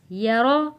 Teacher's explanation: یا زبر یا، را زبر را، را کو ہم نے موٹا پڑھنا ہے کیونکہ را کے اوپر زبر ہے